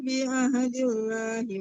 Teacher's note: lam allahnya ditipiskan ya kalau Lam Allah berharakat kasrah. Ditipiskan lam Allahnya dari tadi ditebal-tebalkan mulu.